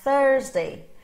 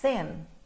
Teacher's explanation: Eu não tenho vibração das minhas cordas vocais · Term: voiceless